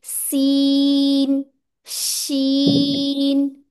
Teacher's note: आपका सीन और शीन सेम ही लग रहा है, शीन में शावरिंग साउंड जरूरी है आना